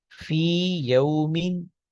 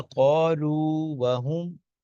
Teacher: ٹھیک ہے، اسی طرح قالو وہم، قالو کے آخر میں بھی واو ہے، وہم کے شروع میں بھی واو ہے. تو یہاں پہ مثلین ہے لیکن ادغام نہیں ہو رہا، اس لیے کہ پہلا حرف مدہ ہے. یہ اصول ہے کہ مثلین میں پہلا حرف مدہ اگر ہو تو ادغام نہیں ہوتا.